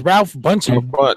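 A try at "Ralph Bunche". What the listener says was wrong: You don't pronounce the E.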